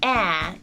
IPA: æ